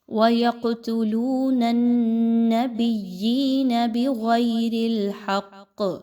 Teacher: وَيَقْتُلُونَ النَّبِيِّينَ بِغَيْرِ الْحَقِّ، یہاں پہ دیکھیے تو قاف پر جزم کی علامت ہے، قاف کو ہلا کر پڑھا جائے گا، اس کو آواز کو روک کے نہیں پڑھنا بلکہ ہلا کر پڑھنا ہے۔ نون کو نون کے ساتھ ملاتے ہوئے نون مشدد کا غنہ کیجئے۔